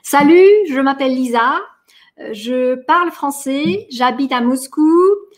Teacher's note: В каждой фразе была интонация наверх.